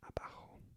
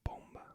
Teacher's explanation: the B is pronounced without quite closing the lips completely, so kind of a softer B